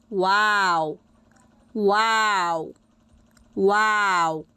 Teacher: উভয় ঠোঁটের শুকনো অংশ একসাথে হালকা করে লাগিয়ে উচ্চারিত হবে মিম মিম। উভয় ঠোঁটকে না মিলিয়ে অর্থাৎ গোল করে উচ্চারিত হবে